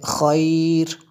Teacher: تو اگر رکیں گے تو اس کو خیر پڑھیں گے، اس لفظ کو پڑھیں گے خیر۔ یہ رو آخر پہ جو ہے باریک ہوگی، کیونکہ اس سے پہلے یا ساکنہ ہے